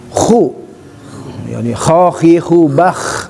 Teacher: ada ngoroknya ada getarannya sehingga sempurnalah huruf ko ya di atas tenggorokan jadi adnal khalqi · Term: huruf kho